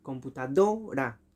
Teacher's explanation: Do es la sílaba tónica y el resto son las sílabas átonas